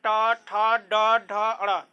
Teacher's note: आपका जीभ जो है ना, ऊपर तालू जो है ऊपर, उसको मूर्धा बोलते हैं, उसमें सट रहा है ऐसे होके, ट ठ ड ढ ऊपर सट रहा है।